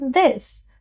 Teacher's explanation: हम इस शब्द को सही तरीके से एक्सेंट में टंग को टीथ के पीछे रख के प्रोनाउंस करेंगे। दिस, दिस, टंग को टीथ के पीछे लाइटली प्लेस करके कहेंगे दिस